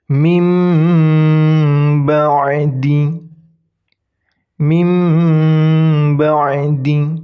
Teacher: Nah, mimnya itu harus didengungkan. Ingat, didengungkan 3 harokat atau lebih. Mim ba'di. Huruf ba-nya tetap dibaca. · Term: iqlab